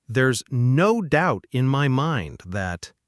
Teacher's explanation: The key is the emphasis on no doubt.